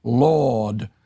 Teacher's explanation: speakers of British English tend to pronounce rather lord without the articulated r sound